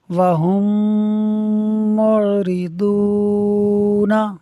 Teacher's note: میم ساکن کے بعد دوسری میم ہے، ادغام شفوی ہوگا، یعنی ہم میم ساکن میں غنہ کریں گے، ملا کر پڑھیں گے